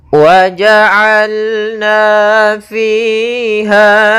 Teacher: Pada bacaan waja'alna fiha, ketiga-tiganya ada bacaan hukum tajwid berupa mad tabi'i, yaitu adanya yang pertama pada huruf na ada fathah bertemu alif, maka panjang 2 harakat